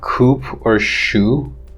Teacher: If you have a word like coop or shoe, in which the first sound is ka and sha in these two words, but they are followed by the sound u, the vowel u. During the pronunciation of u, the lips are rounded. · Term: labialization